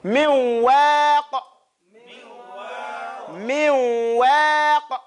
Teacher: You go to the noon sound, but then you come with the sifat of wow.